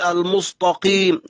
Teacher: يطغى عليه حرف القاف المستعلي على حرف التاء المستفل فيقلب التاء طاء فيقول المستقيم، لا اهدنا الصراط المستقيم، ويكسر القاف وينزل بالفك الأسفل.